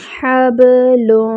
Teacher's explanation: ہا پہ جو ہے وہ الف مد بن رہی ہے، الف خالی اس سے پہلے فتحہ الف مد، اس کو 2 حرکات برابر لمبا کریں گے اور ہا جو ہے وہ اقصی الحلق سے ادا ہوگی۔ حبل یہ والی ہا جو ہوتی ہے وہ وسط الحلق یعنی حلق کے درمیانی حصے سے ادا ہوتی ہے۔ با ساکن ہے، با پہ جو ہے وہ قلقلہ کریں گے.